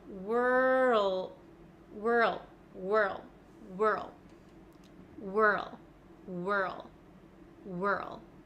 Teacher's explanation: skip over the W and go straight to R [Music] so when I make this W with my lips at the same time my mouth is ready for the r sound · I can feel my tongue sliding from the back to the front so from R to L